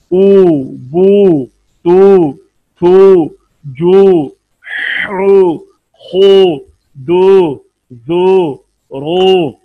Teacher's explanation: ہونٹوں کو گول کیا ہوا ہے اس سٹائل میں جیسے آدمی کسی چیز کو پھونک مارتا ہے تو پھر ہونٹوں کی یہ پوزیشن آتی ہے. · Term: واو